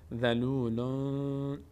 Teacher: به همین بابت اینجا ما در تلفظ تنوین لام ما نون رو از مخرج خودش ادا نمی کنیم و از بینی ادا میشه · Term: اخفا